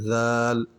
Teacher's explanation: زبان کو دانتوں کے نیچے لے کر آنا ہے، تھوڑا سا باہر کی طرف، تھوڑا سا دانتوں کے نیچے آ جائیں، ذال، ٹھیک ہے۔